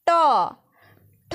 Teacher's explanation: রয়েছে মূর্ধন্য বর্ণ যেহেতু এই বর্ণগুলি বা ব্যঞ্জন ধ্বনিগুলি উচ্চারণের সময় আমাদের জীভের অগ্রভাগটি উল্টিয়ে মূর্ধাকে স্পর্শ করে উচ্চারিত হচ্ছে সেই কারণেই এর নামকরণ করা হয়েছে মূর্ধন্য ধ্বনি আর এটা কি